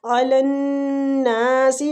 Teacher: نون مشدد پہ غنہ کریں گے اور کھینچیں گے